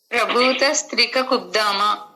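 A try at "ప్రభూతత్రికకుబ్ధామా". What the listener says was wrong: స్త్రిక అది అక్కడ, అందుకు అడిగాను. స్త్రిక కొద్దామా కాదు, త్రిక కొద్దాం. ప్రభూత త్రిక కొద్దామా, సంధి కలిసి ప్రభూత త్రిక కొద్దామా. స్త్రీ అనగానే రాసినప్పుడు మీకు స్త్రీ అని వస్తుంది. అక్షరం స్త్రీ అని వస్తుంది. ప్రభూత సా కింద తా వచ్చి పట్రసూడు త్రిక కొద్దామా, దాని పేరు త్రిక కొద్దామా.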